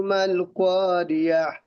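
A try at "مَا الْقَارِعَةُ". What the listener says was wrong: और আহ, শেষে গোল হা ছোট হা হবে, মানে গোলা বড় হা হবে না। মাল করিআহ, শেষে এই হাটা বড় হার মতন হয়ে যাচ্ছে, ছোট হা হবে, বড় হা হয়ে যাচ্ছে আপনার।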